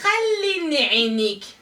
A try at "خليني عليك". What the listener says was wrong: Non, pas عينيك, t'as dit l'œil là.